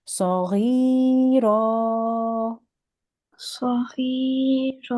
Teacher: two fathahs, you make it into one fathah and you elongate for 2 seconds